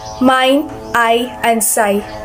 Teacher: this kind of vowel is made by moving from one vowel to another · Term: diptons